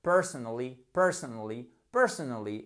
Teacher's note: Là, ce qui fait la différence, comme à notre habitude, mais encore plus pour ce mot, parce que si vous dites personally, ça ne marchera pas, c'est bien évidemment la prononciation et accentuée au bon endroit sur la première syllabe